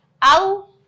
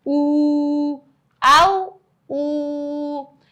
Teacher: اسی لفظ میں آپ نے ڈفرنس بھی دیکھ لیا کہ حرف مدہ اور حرف لین کو پڑھنے میں کیا ڈفرنس ہے, یعنی کہ حرف لین کو ہم نے پڑھا جلدی سے او اور پھر بڑا حرف مدہ بن رہا تھا تو ہم نے اس کو کھینچ دیا